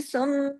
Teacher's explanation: جب دونوں میم پڑھے جائیں گے تو غنہ لمبا ہو جائے گا، یعنی آواز دیر تک ناک میں چھپے گی، اسی کا نام غنہ ہے۔